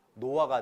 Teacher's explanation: 히읗이 다 날아가 버리죠. 히읗 탈락입니다.